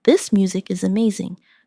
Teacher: Stress amazing to show enthusiasm.